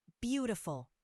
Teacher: The first syllable is stressed.